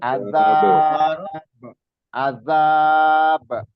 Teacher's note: Kalau disukunkan dia otomatis memantul atau kol-kolah.